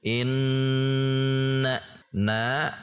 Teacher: Setiap ada tasydid dibaca inna, tidak dibaca inna, harus ada dengung, berarti ada dengung, ada suara ke hidung